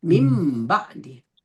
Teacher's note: Nun matinya itu bertukarnya jadi huruf mim mati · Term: iqlab